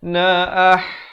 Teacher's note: ha pedas di pertengahan kerongkong.